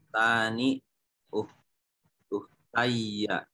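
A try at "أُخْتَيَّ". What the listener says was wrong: Uhtaya. Nah, itu enggak boleh bertasdid kalau alif sebelumnya. Uhtaya. Nah, kalau ya sebelumnya ya uhtaya.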